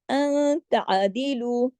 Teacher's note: نون کے بعد تار ہے، اخفا حقیقی غنہ کامل ہے